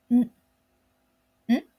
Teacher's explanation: to make the regular n sound in Japanese, the back of your tongue should be raised towards the back of your mouth. And then let the air comes out through your nose while your vocal cords vibrates.